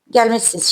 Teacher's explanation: Yəni siniz yox, siz şəklində tələffüz olunur.